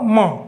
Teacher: त थ द ध न प फ ब भ म, म भी बोलते हैं तो यहाँ जोर पड़ता है, तो नाक पे जोर पड़ेगा, इसलिए इसको अनुनासिक कहते हैं